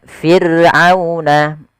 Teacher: ra sukun didahului dengan huruf kasrah, maka dia dibaca dengan ra tarqiq, ra yang tipis, tidak boleh ditebalkan.